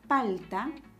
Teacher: la palabra palta lleva la mayor fuerza de voz en la penúltima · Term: palabras graves